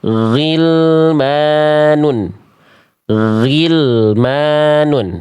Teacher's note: Ghilmanun, dialirkan jangan G. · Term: huruf ghain